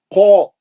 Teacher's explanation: خاف مستعلیہ کا ہے، موٹا گول منہ سے پڑھیں گے، مد اصلی ہو رہا ہو.